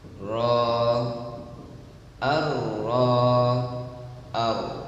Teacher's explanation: huruf ra selain dia dibaca tebal ketika bertanda fathah dan dhamma, dan dia juga digetarkan tidak melebihi 2 getaran